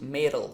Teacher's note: Pay attention that particularly in American English, when you say M-E-T-A-L, you pronounce it metal, okay? You used to sort of swallow that T sound